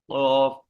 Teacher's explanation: قوف، قوف ادا ہوتا ہے زبان کی جڑ اور کبے سے. قوف، وہی اوپر کے اوپر، قوف یعنی زبان کی جڑ کو اوپر لگانا ہے، اوپر وہی قریب میں کبا ہوتا ہے.